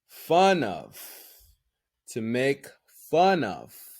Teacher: the n is linked to the oh